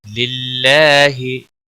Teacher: اللہ کے لام کو باریک پڑھیں گے کیونکہ اللہ کے لام کے پچھلے حرف کے نیچے زیر ہے اور اس کے اوپر کھڑی زبر بھی ہے، ایک الف کے برابر کھینچ کر پڑھیں گے۔